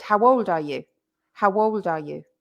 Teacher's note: But it's actually 2 words. It's how old, but we link them together, and it's much easier to say.